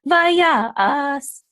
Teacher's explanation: So it's going to give the accent on the Ya.